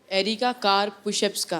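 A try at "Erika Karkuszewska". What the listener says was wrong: मैं कहा एरिका कार एंड pushups, तुमने बीच वाला खा लिया।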